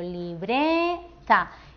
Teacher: Damos mayor intensidad a esta sílaba, la del medio, libreta, que es la penúltima. Así que también será una palabra llana. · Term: sílaba tónica